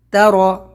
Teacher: را کو موٹا کریں گے، تا کو پتلا